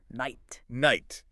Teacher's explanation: the final T is often not a strong released puff of air, but more of a quick unreleased stop. Almost like a subtle version of that glottle stop we just talked about.